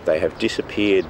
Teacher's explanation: Because stressed the auxiliary verb have, the H sound is pronounced. He says, they have.